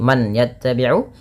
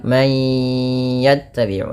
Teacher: masukkan bunyi suara nun kepada huruf ya